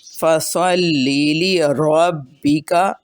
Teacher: را کے اوپر زبر ہے اس لیے را کو موٹا کیا۔